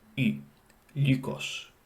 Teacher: Ancient Greek also has the sound U, as in lykos, U. This is the same as I, except it's pronounced with the lips rounded.